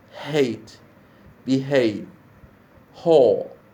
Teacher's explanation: the vocal cords are close to each other when pronouncing the glottal fricative sound, as in hate, behave, haul, and so on.